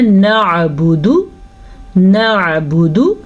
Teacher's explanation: دال کو لمبا نہیں کریں گے اور عین کو کلیئر کر کے پڑھیں گے